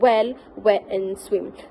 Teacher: In English, the sound w is found in the word like well, wet, and swim. So when producing the sound, the lips are rounded, and the back of the tongue is closed towards the soft palate, creating a slight constriction, but not a complete closure like plosives. · It is produced by bringing back tongue close to the velum, without creating a full closure, allowing the airflow to pass relatively free. It is considered a semi-vowel or a glide. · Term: velar approximant w